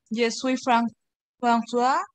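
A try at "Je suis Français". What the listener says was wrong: Français. Ok, français, porque la A y la I se pronuncian como una E. Français. Repite, français. Sí, cuidado, ese es un error muy común. Y este, François está aquí arriba. François es Francisco. La O con O y eso suena a François es Francisco. El idioma francés y la nacionalidad es français. Français.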